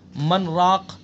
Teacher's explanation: یعنی آواز تو بند ہو جائے، سانس نہ ٹوٹے، یہ ہے سکتہ